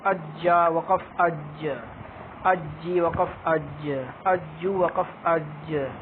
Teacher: یہ حروف قلقلہ ہے تو اس کی وقف کی آواز میں زیادہ ہلے گی